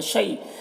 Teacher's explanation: شی یا لین سے نرم آواز کے ساتھ جلد پڑھیں گے